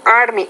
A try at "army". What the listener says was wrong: Just a couple of things. The R sound. Army, R, not army, army.